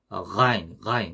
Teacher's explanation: 요 가인도 약간 목구멍 소리, 그러니까 목젖하고 목구멍 그 근처에서 나는 소리입니다. 그러니까 목구멍 소리에 가깝죠.